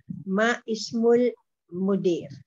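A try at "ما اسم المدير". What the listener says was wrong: Masmu. Alif must be silent.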